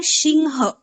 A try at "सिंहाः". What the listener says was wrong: বিসর্গ আছে, বিসর্গ উচ্চারণ করতে হবে। সিমহা বিসর্গ উচ্চারণ সিমহা। দেখুন শব্দ হচ্ছে সিংহ, শব্দ হচ্ছে সিংহ, এবারে বিসর্গের দরুন আমাদেরকে আবার হা উচ্চারণ করতে হবে। তো সিমহাহা, সিমহা প্লাস হা, সিমহাহা, সিমহাহা।